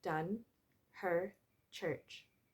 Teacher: The vowels are produced with the tongue positioned in the center of the mouth. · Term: central vowels